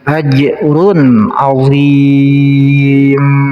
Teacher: ada tanwin menghadapi ain, ini namanya izhar, harus jelas dibaca tanwinnya · ajrun ini ada jim sukun namanya qalqalah, jadi bacanya harus dipantulkan